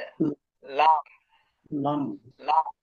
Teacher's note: জিহ্বার আগার কিনারা সামনের উপরের এক পাশের দাঁতের গোড়ার সঙ্গে লাগিয়ে